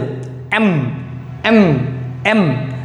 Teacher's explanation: এটা একটু ভিতর থেকে কম্পন হবে এম এম ঠোটগুলো মিলে যাবে